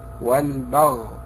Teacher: أرقق الباء وأفخم الغين، فلا بد من الانتباه لذلك، لأن البعض يقع في هذا الخطأ عند النطق بحرف الباء.